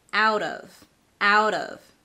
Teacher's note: The T in out becomes a flap T because before the T there is a vowel and after the T is an unstressed vowel. I did not say out of, I said out of, out of.